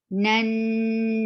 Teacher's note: Mu, nan, this noon is attached with noon, and you find as soon as you find noon with tashdid, you are giving it 2 haraka gunna, longer gunna, kamil gunna. This is a complete gunna.